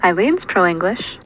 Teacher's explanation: The second syllable is stressed in Eileen. This part, and you can see here that there's a rise through it. · But since this is mostly rise and there's actually kind of a peak in F0 on the syllable, we'll go with a low plus high star. I like this low dash high boundary tone at the end as well.